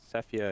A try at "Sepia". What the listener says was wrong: Isn't it Sepia? Not Sephia? Or Sephiroth? Sepia. It's Sepia. Sepia.